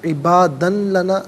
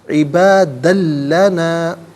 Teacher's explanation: عبادن میں دال پر 2 زبر کی تنوین ہے، اسے لام کے ساتھ ملا کر لام کی آواز کو ادا کیا جائے گا، عبادن لنا نہیں، عبادن لنا۔